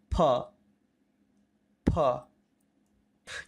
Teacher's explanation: इसके उच्चारण में दोनों होठों को मिलाकर हम हवा बाहर निकालते हैं